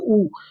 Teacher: ऊ का देखना है, ऊ का क्या हो जाएगा उच्चारण स्थान, तो वही है, बोल के देख लीजिए ऊ, ऊ बोलिएगा तो क्या हो रहा है, क्या हो रहा है, होठ आपका सट रहा है ना, ऊ, होठ पे जोर पड़ रहा है